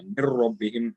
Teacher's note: min gets idgham with ra without a gunna